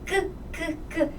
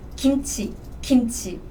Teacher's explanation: Korean G sound is a bit tricky though, because this Korean G sound is between English G and English K